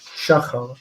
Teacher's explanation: the segolet structure is, of course, patach patach, with the accent on the mil el. It's the previous syllable, shachar.